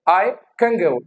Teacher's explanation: अब ग की वजह से ये जो न है that becomes ng, that becomes ng.